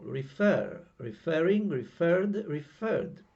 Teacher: last syllable the stress falls on the last syllable